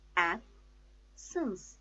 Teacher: The stress is on first syllable.